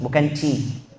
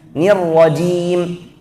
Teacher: Makhrajnya sama, tapi sifatnya beda. Kalau c dengan jim satu makhraj, tapi kalau jim itu sifatnya jahar, kalau c sifatnya hamas